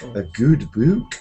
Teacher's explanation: only in Scotland do they pronounce them all with this ooh sound